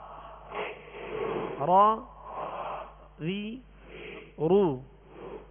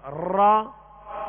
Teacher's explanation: اس کے ادائیگی میں آواز میں کپ کپاہٹ ہوگی، جسے رعشہ کہتے ہیں، کپ کپاہٹ ہوگی. · اس کی خوبی ہے کہ اس میں تکرار کی مشابہت ہو، مکمل تکرار نہ ہو